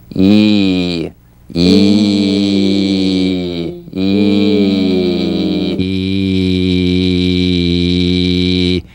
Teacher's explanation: the y buzz is the sensation of the e sound as a buzz or vibration on the gum ridge right here on the gum ridge right above the front teeth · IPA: /i:/